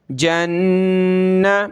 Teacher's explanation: جیم کو نون کے ساتھ ملا کر نون پر ہم نے غنہ کرنا ہے. جیم نون زبر جن، نون زبر نہ، جن.